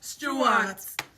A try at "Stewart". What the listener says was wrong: Sorry, there's no R.